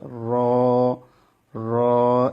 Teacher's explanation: 10 নম্বর মাখরাজ, জিহ্বার আগার পিঠ তার বরাবর উপরে তালুর সঙ্গে লাগিয়ে র। এই অক্ষরটা উচ্চারণ করার সময় যেমন আবার র, এভাবে জিহ্বা যেন বারবার টক্কর না লাগে, একটু লক্ষ্য রাখবেন এদিকে।